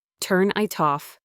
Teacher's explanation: The N in turn jumps over to the I.